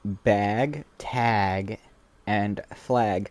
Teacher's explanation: in words like bag, tag, and flag have a like distinctive raised vowel sound